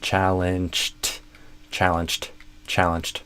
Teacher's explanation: So you can imagine it's kind of a challenged ched almost a ch and then a t sound